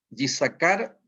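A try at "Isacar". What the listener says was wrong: Se pronuncia Isaacar. La Y no se toma.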